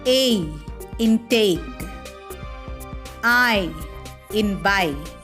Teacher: A diphthong is a sound formed by the combination of two vowels in a single syllable, in which the sound begins as one vowel and moves towards another. That's why it is also known as a gliding vowel.